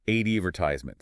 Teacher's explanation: a word like advertisement British English stresses the second syllable advetisement American English stresses the first